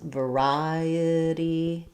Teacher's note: So second syllable stress, variety. We stress on the ri syllable. Letter I does say the I diphthong.